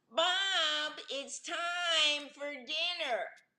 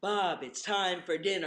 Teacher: make your voice come out your mouth, not your nose, and make the vowels shorter · Whining is the air comes out the nose and the vowels are elongated.